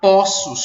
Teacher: o plural de poço será poços, com o O aberto